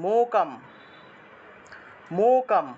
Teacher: অনুসার থাকায় ম উচ্চারণ হবে